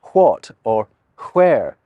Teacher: Think about how some people in Scotland will say what or where. They're emphasizing the H's, if anything.